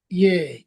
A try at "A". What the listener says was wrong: এ না এ, মানে ইয়ার মতন না। এ।